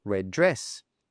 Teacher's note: we drop one of the D sounds and we simply say red dress. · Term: connected speech